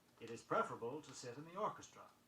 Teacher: The word preferable, P-R-E-F-E-R-A-B-L-E, is accented on the first syllable.